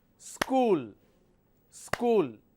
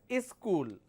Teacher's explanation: don't pronounce this as school they pronounce this as is school they just add a e sound in the beginning